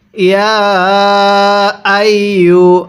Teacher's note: ইয়া এর মধ্যে কিন্তু 3 আলিফ টানতে হবে